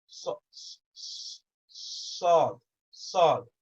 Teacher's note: Sad, you make that O shape with your lips.